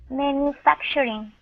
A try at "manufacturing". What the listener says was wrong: Okay, give me a good R at the end. Instead of manufacturing, it's shuring. Manufacturing.